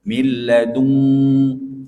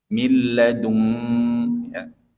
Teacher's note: Milladung, seperti huruf eng. Karena nun bertemu kaf atau nun bertemu qaf, itu ikhfa-nya didengungkan mirip seperti ejaan huruf eng.